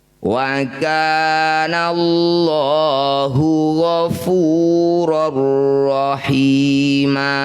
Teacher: Bunyi fathah tanwinnya ganti jadi fathah panjang. Panjangnya dua harakat saja meskipun di akhir ayat ya. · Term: mad iwat